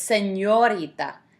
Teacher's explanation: you have the n and then you have the Y sound right after it